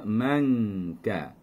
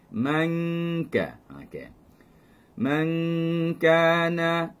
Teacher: Nun mati bertemu dengan kaf kerana jauhnya makhraj kaf daripada nun. Kaf berada pada percampuran langit lembut dan keras, sedangkan nun berada pada gusi, di belakang gigi, kacip atas sahaja. Jadi jauh kedudukannya.